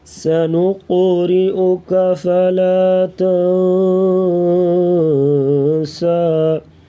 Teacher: قاف کو موٹا کریں گے اور کلکلا کریں گے